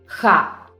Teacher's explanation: The next letter is ha. It sounds pretty similar to the H sound in English, only pronounced with a little bit more effort.